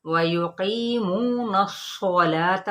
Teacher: वयुकीमू, और नून की ज़बर को हम सौत के साथ मिलाएंगे, लेकिन सौत क्या है? हरूफ मुस्तआलिया में से है, और इसको हमने सौत को पुर पढ़ना है